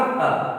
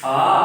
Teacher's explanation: जब हम दीर्घ स्वर को बोलेंगे आ, तो निश्चित है इसमें दुगना समय लगता है